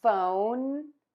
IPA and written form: foʊn (PHONE)